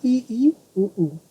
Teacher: संवृत, इनके उच्चारण में मुख द्वार लगभग पूरा ही बंद रहता है, मतलब ई उ ऊ।